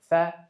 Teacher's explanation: sifatlari hams, ya'ni jarangsiz harf hisoblanadi. Tovush paychalari ochiq bo'ladi, havo kam chiqadi. Ikkinchi sifati rohova, ya'ni sirg'aluvchi. · Fa harfining mahrajiga keladigan bo'lsak, fa harfining mahraji tepa tishlarimizning kesuvchi qismi pastki labimizning o'rta qismiga tegish orqali hosil bo'ladi